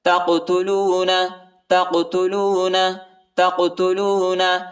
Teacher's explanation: تا کو قاف کے ساتھ ملائیں گے اور قاف کو جھٹکے کے ساتھ پڑھیں گے، یہ حروف قلقلہ کا حرف ہے